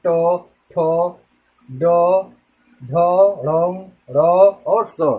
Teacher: हमारी जीभ जो है तालु को टच करती अगले हिस्से, यानी दांत के बगल में थोड़ा सा ऊपर जब टच करती है वही होता है हमारा क्या, मूर्धन्य होता है।